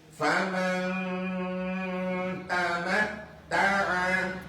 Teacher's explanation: Ingat non mati ketemu ta, tetap berdengung. Ikhfa.